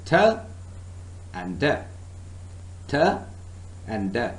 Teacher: Surface is covered with little ridges, and sounds made by the tongue touching this area such as t and d, they are also called as alveolar sounds · You can feel the tongue, your tongue is touching because you are producing alveolar sounds.